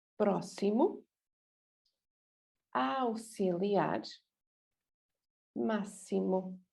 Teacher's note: So especially this máximo, be careful, the idea of maximum. I know in English it's x, but here is s.